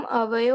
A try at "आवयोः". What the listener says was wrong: हाँ, अवयो क्यों बोलते हैं? आवयो।